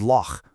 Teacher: And for the cha, think of the Scottish word loch or the German bach. It's an exhaled hiss, almost like a really light snoring sound. Just focus on the friction there, not your actual voice.